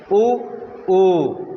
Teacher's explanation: पश्च स्वर हैं, जीभ के पीछे वाले हिस्से से बोले जाते हैं। ऊ ऊ जीभ के पीछे वाले हिस्से से बोले जाते हैं